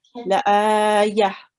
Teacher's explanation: So normally, if we don't stop, we would be reading it tan, but because it's ta al marbuta, and we are stopping, we will be reading it as a ha